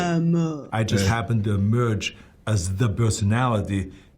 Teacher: he also rounds his lips for the nurse vowel. You can see it in the words emerge and personality.